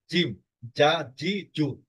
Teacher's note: আর জিম হবে যা, জিহ্বার মানে সামনের অর্ধাংশ একেবারে তালুতে লেগে বন্ধ হয়ে যাবে, এটাতে কোনো ফাঁক থাকবে না